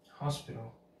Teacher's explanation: the T is right after a non-stressed syllable, the PI, and right before the PI, there is a stressed syllable. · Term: flat T